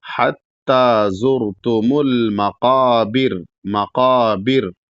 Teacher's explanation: بر میں یہاں پر جب رکیں گے تو یہاں پر بھی را ہے جو کہ رکنے کی وجہ سے ساکن ہو جائے گا، لیکن یہاں را کو باریک پڑھیں گے کیونکہ را ساکن سے پہلے یہاں پر با پر زیر ہے، اور قاعدہ ہے کہ جب را ساکن سے پہلے زیر ہو تو وہاں را کو باریک پڑھا جائے گا.